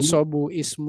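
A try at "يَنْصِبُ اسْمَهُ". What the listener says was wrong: Yansi, bukan yanso. Yansi busmahu. Yansi bus. itu hamzah wasol jangan dibaca. Bukan yansibu ismahu, tapi yansibusmahu.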